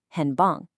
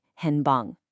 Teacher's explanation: The first one pops up and becomes a second tone.